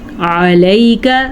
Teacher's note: یا لین ہے تو اس کو لئی کا ہی پڑھیں گے